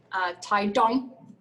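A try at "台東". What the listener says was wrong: You have to say it like that. No, it's more emphasis on the D. Taidong.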